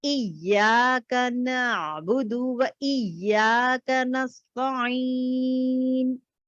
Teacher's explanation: stress करें, because शद है, तो टू टाइम्स टू काउंटिंग में आना है मुझे